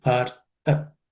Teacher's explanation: The next word, partha, the th is the second letter in the tha varga and it has to be aspirated.